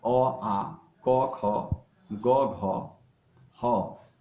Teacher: अ, आ, क, ख, ग, घ, ह एवं विसर्ग का उच्चारण कंठ से होता है, इसलिए ये कंठ वर्ण कहलाते हैं।